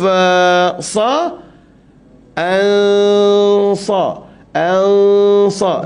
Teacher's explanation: kita dengung dia dengung ke hidung